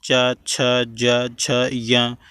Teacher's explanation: चा वर्ग के जितने भी होते हैं उनको हम तालव्य व्यंजन कहते हैं, जिन्हें हम तालु से बोलते हैं